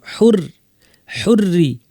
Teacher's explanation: যেমন এর পরেরটা দেখেন, বিল হুররি, এখানে হুর বলবো না, রয় তাসদিদ সাথে জের, পুরোটাই পাতলা।